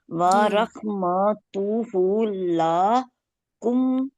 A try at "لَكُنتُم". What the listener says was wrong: لا نہیں کہنا نا، لمبا نہیں کرنا. لا کر دیں گے اس کا مطلب ہو جائے گا نہیں. لام زبر الف لا، اس کا مطلب ہو جائے گا نہیں.